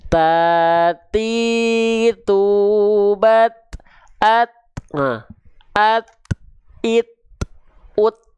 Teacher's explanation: Jadi ketika kita lafalkan, teman-teman sekalian, ujung lidah kita tuh tak nampak.